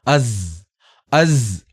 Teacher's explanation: ആവാൻ പാടുള്ളതല്ല സീനിന്റെ ശബ്ദം വരാൻ പാടുള്ളതല്ല അസ് കനത്തിൽ പറയാം അസ് അവിടെ നമ്മുടെ രണ്ട് ഇരുനിര പല്ലുകൾ അടഞ്ഞു നിന്നുകൊണ്ട് ആ നാവ് വന്നുകൊണ്ട് മുട്ടുന്ന രൂപത്തിൽ രണ്ട് പല്ലുകളുടെയും ചേർന്ന് നിൽക്കുന്ന സ്ഥാനത്ത് നാവ് വന്നുകൊണ്ട് മുട്ടുന്ന രൂപത്തിൽ അസ് അസ്